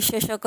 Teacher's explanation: जीभ मध्यभागी तालूला किंचित स्पर्श करते. यथा शशकः इति शब्दे म्हणजे शशकः हा शब्द जर उच्चारण केला तुम्ही तर बघा श हा श थोडा मागून बोलला जातो. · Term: तालव्य